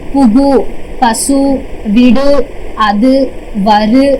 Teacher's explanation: ஓசை குறையாமல் ஒரு மாத்திரை அளவில் முழுமையாக ஒலிக்கிறது தான் முற்றியல் உகரம்